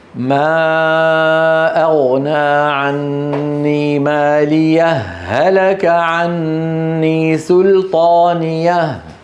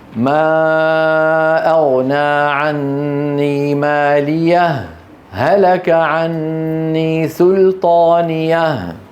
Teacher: ما ايوه لما تصل عندك وجهين واحد منهما افعل ايهما تحب اما ان تدغم الهاء في الهاء لانه التقى متماثلان واما ان تسكت بدون تنفس على الهاء الاولى